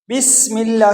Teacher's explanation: سین میں سیٹی کی آواز نکالیں گے